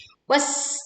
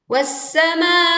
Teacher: Leburkan alif lam ke sin sehingga suara kita langsung menekan ke sin. Was, ada suara seruit tajam terdengar. Wassamai. Panjangkan ma 4 sampai 5 harokat.